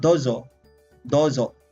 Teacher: But in pronunciation, it's double O. So it's some sort of prolonged O or long vowel O.